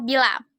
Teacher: bunyi ih dengan ciri-ciri tinggi depan tak bulat